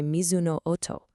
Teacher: And it's immediately followed by mizuno oto. Where that long o sound just stretches out, echoing the sound of the water and the ripples spreading out.